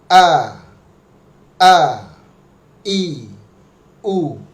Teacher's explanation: Huruf hamzah dia di dasar tenggorokan, posisinya di dekat jakun ya. Di sini di jakun ya.